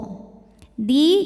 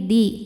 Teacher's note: ujung lidah menyentuh pangkal gigi seri atas jangan terl lalu keegusi ya bukan di tapi ini di tipis